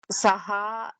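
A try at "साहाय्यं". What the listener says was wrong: So you have to press the yakara also. Sahayam, like that. Double ya is there. See, sahayam kritavan.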